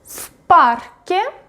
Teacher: when the next the word starts with unvoiced consonant, for example, p is unvoiced, v becomes unvoiced